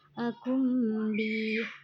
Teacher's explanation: Idhar syafawi dibaca jelas. Akum bi nun sukun bertemu ba, maka bunyi nun sukun berubah menjadi mim dan disertai dengung